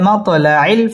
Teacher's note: ত কলকলার হরফ ধাক্কা দিয়ে পড়তে হবে